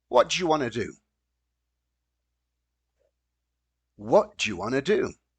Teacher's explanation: we have this combination of want to becomes wanna do.